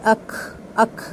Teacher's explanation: काफ को साकिन पढ़ते हुए अक्सर लोगों लोग उसमें जो एयर निकालते हैं ना उसके साथ ह की साउंड ले आते हैं।